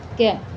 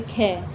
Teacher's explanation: कै को बोलोगे तो मुंह से कम वायु निकलेगी कै, लेकिन अगर आप ख को बोलोगे तो ऐसे लग रहा है कि आप ख बोलते वक्त आपके मुंह से ज़्यादा हवा निकल रही है, ज़्यादा वायु निकल रही है।